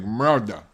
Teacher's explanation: It's like they don't pronounce the R, the first R at all.